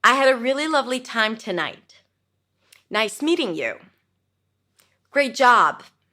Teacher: So I I bring my voice up at the end but then I drop it down. So it's called a rising falling intonation.